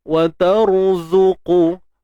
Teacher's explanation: Ra mati sebelumnya baris atas kita kena tebalkan dia.